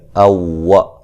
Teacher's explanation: واو کو جو ہے وہ ہونٹوں کو گول کرتے ہوئے ادا کرنا ہے